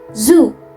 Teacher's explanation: Kalau bunyi voiced seperti z, tenggorokan kita tuh akan bergetar.